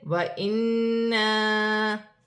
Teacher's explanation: الف مدہ بھی بن رہی ہے، چھوٹی مد بھی ہے، مد منفصل، دونوں کو ملا کر 4 الف کی مقدار کھینچ کر بھی پڑھا جائے گا